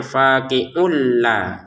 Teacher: Tanwin bertemu lam di sini kita masukin sehingga cara bacanya faqi'ul la. Jadi bukan faqi'un lagi.